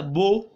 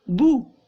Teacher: पेश को, होठों को मुकम्मल गोल करके अदा करेंगे। ये मुकम्मल का लफ्ज़ याद रखिएगा, अगर इसे मुकम्मल गोल नहीं करेंगे ना तो ये मजहूल बन जाएगा।